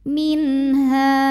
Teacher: Maka nun sukun kita bunyikan dengan N jelas. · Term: idhar halqi